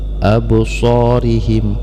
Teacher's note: maka dibaca Qalqalah jadi ada pantulannya sedikit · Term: Qolqolah Sugro